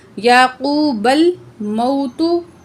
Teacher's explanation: واو ساکن لیکن پچھلے الفاظ پر زبر ہے، واو لین ہے، ٹھیک ہے. اس کو جلدی پڑھیں گے